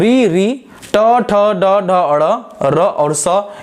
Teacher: री ट ठ ड ढ अड़, र और स, इन सब का उच्चारण कहाँ से होता है, मूर्धा से होता है। और अगर इसी रेखा चित्र में हम बात करें तो आप क्या देख पाएंगे कि री आपका खत्म हो गया, ट ठ ड ढ अड़ खत्म हो गया, इसका उच्चारण मूर्धा से हो रहा है।